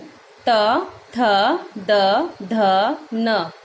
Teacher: ता वर्ग, त, थ, द, ध, न ये दंत वर्ग होते हैं। यानी कि जब हम बोलते हैं तो इसमें दांत लगता है, तो इसे हम दंत वर्ग बोलते हैं।